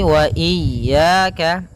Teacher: Hati-hati jangan sampai memanjangkan ya-nya atau tidak mentasydidkan ya-nya. Wa iyya pada lafal ya ada mad tabi'i, yaitu berupa fathah bertemu alif, panjangnya 2 harakat.